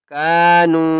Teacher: کاف کو بھی ایک الف کی مقدار کھینچ کر پڑھیں گے اور نون کو بھی ایک الف کی مقدار کھینچ کر پڑھیں گے